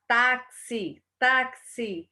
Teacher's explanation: esse X, pessoal, ele tem o som de 2 fonemas. No caso de táxi, o X tem som de KS. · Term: dífono